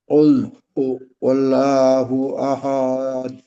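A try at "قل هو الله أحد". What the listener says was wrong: দেখেন, আহাদ বললে হাটা লম্বা হয়ে গেল না, এখানে এইভাবে আহ, হবে, কুল হুয়াল্লাহু আহাদ, কুল হুয়াল্লাহু আহাদ, একটানে পড়তে হবে, মাঝে যেন আওয়াজ আহ, গতিরোধ না হয়।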